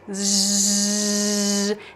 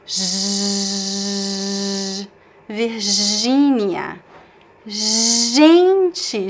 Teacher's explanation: It's Virginia. J, because the G in Portuguese is pronounced as a continuous sound